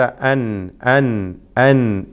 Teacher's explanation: സാക്കിനായ നൂനിനെയും തൻവീനിനെയും ഇൽഹാർ ചെയ്തുകൊണ്ട് വ്യക്തമാക്കി വെളിവാക്കി മണിക്കാതെ ഉച്ചരിക്കണം എന്നർത്ഥം. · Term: ഇൽഹാർ ഹൽക്കി